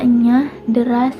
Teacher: fonem E, yaitu vokal sedang, tengah, tak bulat